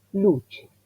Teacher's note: el sonido es el fonema, ese compuesto que tiene el ataque de la T y la versión de la S estiradita